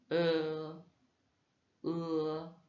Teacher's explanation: il se prononce comme un peu un E, comme bleu en français, mais sans arrondir les lèvres.